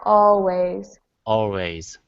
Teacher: that's much better uh what you were doing before was always your tongue was coming up for that L but it doesn't have to